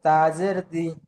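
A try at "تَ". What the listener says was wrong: তা জের নয়, তা জাবার, তা জাবার তা।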